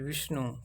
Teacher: विष्णु, इसमें वी पर ज़्यादा बल लगा रहे हैं इसलिए वी बलाघात होगा